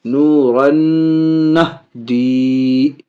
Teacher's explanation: نون ساکن کے بعد نون، ادغام مع الغنہ، ناک میں آواز لے جا کر کے